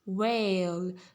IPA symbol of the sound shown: eɪ